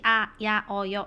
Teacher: 방해를 받지 않는다라는 건 너희가 발음할 때 막힌 소리가 없이 아, 야, 여 이렇게 나오는 거고